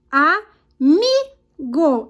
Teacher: Então, foi o mi. Eu vou circular o mi, que está na penúltima sílaba aqui, que é a sílaba tônica da palavra amigo